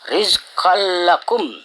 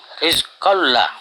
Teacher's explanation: Idgham itu dimasukkan tanwinnya kepada lam. Jadi ditasdidkan lamnya tanpa berdengung. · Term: idgham bila gunnah